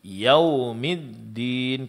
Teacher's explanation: pengucapan huruf dal di sini jangan sampai ditebalkan karena huruf dal huruf tipis.